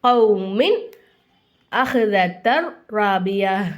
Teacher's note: நூனே சாக்கினையும் தன்மீனையும் நல்லா வெளிப்படுத்தி ஓதணும் மூக்கால மறைக்காம குன்னா செய்யாம